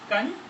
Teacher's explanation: हिंदी में दंत्य का नासिक्य बन गया। ये अनुस्वार दंत्य का नासिक्य बन गया।